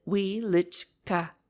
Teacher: You must pronounce it Wieliczka, with the accent on the second syllable.